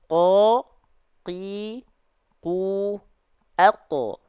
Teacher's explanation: Ujung lidah, tengah lidah, santai. Tapi ketika di pangkal lidah, naik, nempel ke langit-langit lunak. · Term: huruf qaf